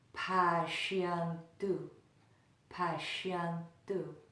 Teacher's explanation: The diacritical mark makes it sound like sha, sha, sha, rather than the sa in sarve. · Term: SH sound